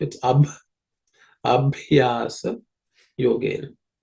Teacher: That bha, fourth one, is an aspirated consonant.